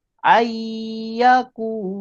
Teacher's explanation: Jadi nun hilang, nun tidak dibaca. Bukan an tapi terus ai. Ai, lepas tu dekat ya ni kena dengung dua harakat dekat bunyi ai. Ayyakula. Kalau kita baca ayyakula, salah sebab tak ada dengung. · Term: idgham bihunah